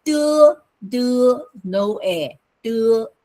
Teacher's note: the non-aspirated D is de, no air, de, no air, no energy